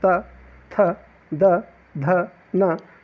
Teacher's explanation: यदि आप उच्चारित करते हैं, उच्चारण करते हैं त, थ, द, ध, न, तो आपकी जो जीवा है वह आपके दांत पर आके, ऊपर वाला जो दांत होता है उन्हें उस पर आके टकराती है, इसीलिए इन्हें दंत व्यंजन कहा जाता है।